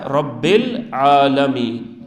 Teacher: ہم نے با کو سیدھے لام کے ساتھ ملایا، الف کو چھوڑ دیا، یہ حمزہ وصل ہے